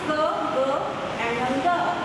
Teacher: The back of the tongue is the active articulator and the soft palate is the passive articulator. Whenever you pronounce these sounds k, g, and ng, you can hear some sound here when you touch your fingers here. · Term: velar